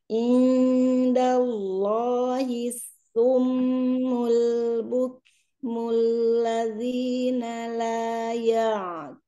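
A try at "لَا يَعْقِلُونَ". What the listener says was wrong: Ini karena ainnya terlalu mantap. Qafnya kalah sama ain. Harusnya qaf yang lebih kuat daripada ain karena ain tipis, qaf tebal. Taqi, taqi gitu.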